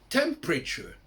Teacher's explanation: ils ne prononcent pas le E de température